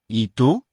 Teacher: the first word is pronounced e and the U is pronounced oo